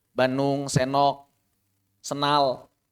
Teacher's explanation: Periangan Timur, Bandung, Garut, Tasik, sebagian Sumedang, sebagian Subang itu mereka sering menghilangkan D dan B kalau sebelumnya ghunah. Jadi kalau sebelumnya N, sebelumnya N itu D-nya hilang. Bandung, Senok, Senal.